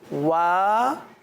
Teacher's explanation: okay बेटा, जब वाव पढ़ेंगे ना तो वा एक होता है वी, वी सही ना, जो ABCD में आता है उसको कहते हैं वी, وی نہیں، وی کی طرح واؤ نہیں پڑھیں گے بلکہ ہونٹ گول کر کے پڑھیں گے